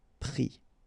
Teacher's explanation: final s not pronounced, but still you need to write it